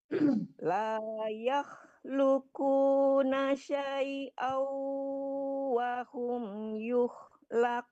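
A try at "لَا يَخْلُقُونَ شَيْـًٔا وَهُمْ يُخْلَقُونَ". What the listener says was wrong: Ya, syai'au agak ditarik ke hidung, jangan syai'au. Kalau syai'au cuman dapat tasdidnya, dengungnya belum ya. Syai'au agak ditarik ke hidung ya, Bu.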